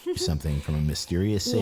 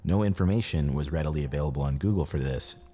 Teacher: No, I think the issue is, the bass is turned up a bit too much. He has a little bit of vocal fry, and he's really close to his microphone, so you can hear all of his mouth sounds.